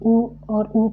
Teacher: जब ऊ और ऊ का उच्चारण करते हैं लोग तो हमारे होठ जो हैं दोनों चिपक जाते हैं, यानी गोल हो जाते हैं। तो इस तरह से भी समझ में आ जाए कि ऊ का ऊ का उच्चारण स्थान ओष्ठ हो जाएगा, री का मूर्धा हो जाएगा।